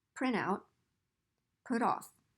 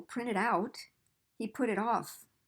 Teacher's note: Give more stress to the second word or the particle.